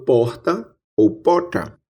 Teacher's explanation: Aqui no interior da Paraíba, como em boa parte do interior do Nordeste, temos a pronúncia de uma fricativa aspirada R